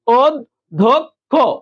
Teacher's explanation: অ এর পরে জ ফলা থাকলে এই অটা ও হয়ে যায়, অটা ও হয়েছে